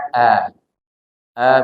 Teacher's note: mulai dari kalimat auudu auzu terdiri dari a pertama huruf Hamzah Hamzah itu makhrajnya di pangkal tenggorokan maka bunyinya a